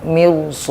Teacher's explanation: ro tidak dibaca tarqiq melainkan tetap dibaca tafkhim sekalipun jatuh setelah harakat kasrah